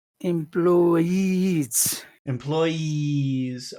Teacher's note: e is a very long sound at the final part of that word